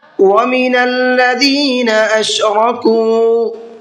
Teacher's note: وَمِنَ الَّذِينَ أَشْرَكُوا، را کو منہ بھر کے پڑھنا ہے اور کاف کو کھینچ کر کے پڑھنا ہے، اس لیے کہ یہاں پر واو مدہ کا قاعدہ ہے، واو ساکن ہے اور اس سے پہلے پیش ہے۔